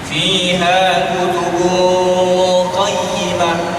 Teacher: Tanwin bertemu dengan qaf, ikhfa hakiki. Fiha kutubun qayyimah. Ikhfa itu di dengung